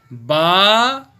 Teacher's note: با دونوں ہونٹوں کے تر حصے کو ملانے سے پڑھا جاتا ہے